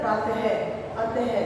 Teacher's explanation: पीछे ह की साउंड आती है तो वो क्या है? वो विसर्ग है। उनके पीछे 2 बिंदु लग जाते हैं तो उसको हम विसर्ग कहते हैं।